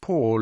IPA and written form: ˈpɔːl (Paul)